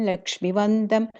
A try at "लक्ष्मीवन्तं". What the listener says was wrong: The Lakshmi long E there. Yeah, Lakshmi Vantam.